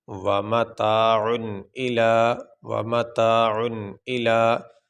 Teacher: غنہ کہتے ہیں ناک میں تھوڑی دیر آواز کو ٹھہرانے کا نام غنہ ہے، تو یہاں پہ غنہ نہیں ہو رہا